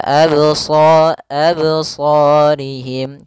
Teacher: pada lafal qalqalah ini tidak boleh ada hamzah tambahan